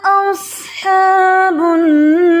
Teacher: صاد یہ ہیوی ہے، اس میں سیٹی بھی ہے